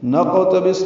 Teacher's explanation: نقتبس میں قاف ساکن ہے، اس پہ قلقلہ ہے، سین ساکن پہ ہمس ہے